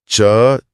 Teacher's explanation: इसमें जीभ ऊपर तालू को छूती है।